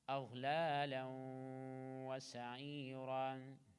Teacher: لام connected with واو. إدغام.